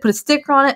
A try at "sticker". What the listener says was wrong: For some reason, it sounded like put a stick on it. Sticker.